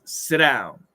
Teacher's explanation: sit becomes a ghost T. It disappears. And the down is there.